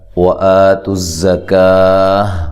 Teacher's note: واو کو ادا کرتے ہوئے ہونٹوں کو گول کرنا ہے، حمزہ کو تحقیق کے ساتھ پڑھنا ہے اور لمبا نہیں کرنا